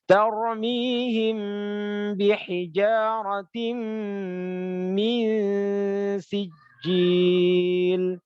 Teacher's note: Itu bacaan ikhfa syafawi Mingkem, cara bacanya mingkem, terus dengungnya tiga harokat.